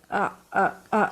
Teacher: حلق کے نیچے والے حصے سے باریک آواز میں ادائیگی کرتے ہوئے حمزہ کہنا ہے